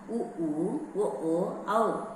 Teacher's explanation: உ ஊ, ஒ ஓ, ஔ ஆகிய எழுத்துக்கள் இதழ் குவிவதால் பிறக்கின்றன